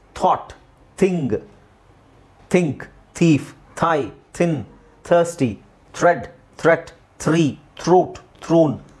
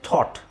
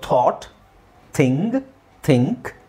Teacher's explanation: ಬಟ್ ಸಾಮಾನ್ಯವಾಗಿ TH ಹೇಳಬೇಕಾದ್ರೆ ಇಂಗ್ಲೀಷಲ್ಲಿ ನೀವು ಅದನ್ನು ಥ ಅಂತ ಹೇಳೋದಾದರೆ ಮಹಾಪ್ರಾಣ ಥನೇ ಹೇಳ್ತಾರೆ ಕಾಮನ್ ಆಗಿ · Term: ವಾಯ್ಸ್ಲೆಸ್ TH